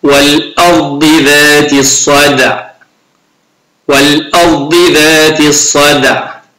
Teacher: الصاد حرف مفخم والدال ساكنة مقلقلة